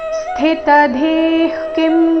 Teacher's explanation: ಅದರ ನಂತರ ಮತ್ತೆ ಧಿ ಮಹಾಪ್ರಾಣ ದೀರ್ಘ ವಿಸರ್ಗದ ಉಚ್ಚಾರಣೆ ಅರ್ಧ ಖ ರೀತಿ